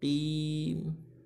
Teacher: Nah itu ya, yang pakai o kecuali huruf ro. Huruf isti'la ketika kasroh pun harus ya tafkhim, tebal.